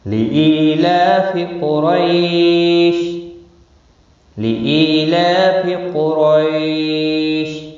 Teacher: قاف مستعلیہ ہے، پر پڑھا جائے گا، را زبر کی وجہ سے پر ہوگا۔ · روئی یا لین ہے، تھوڑا نرمی کے ساتھ کھینچ کر ادا کریں گے۔ شین ساکن پڑھا جائے گا وقف کی صورت میں، 3 سے 5 الف کے برابر کھینچ کر وقف کریں گے